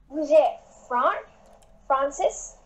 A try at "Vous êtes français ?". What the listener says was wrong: Vous êtes français, but you need to make it more like vous êtes français? It needs to grow a little. It's a question.